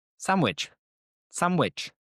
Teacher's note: Most people would remove the D, and it becomes sandwich. Sandwich. It flows so much nicer.